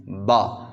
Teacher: اندر والے دو ہونٹوں کو آپس کے اندر ملا کے ان کو چھوڑنا ہے تو با ادا ہوگی